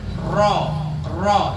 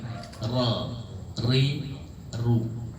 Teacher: punggung lidah bertemu dengan langit-langit atas bagian depan Jadi bukan ujung lidah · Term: huruf ro